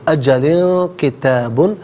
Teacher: تنوین ہے، اس کے بعد کاف آ رہا ہے تو یہاں لام کے نیچے دو زیر کی تنوین، تو یہاں اخفا کریں گے